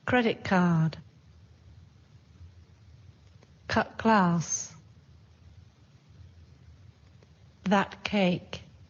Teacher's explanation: Sometimes the t sounds more like k.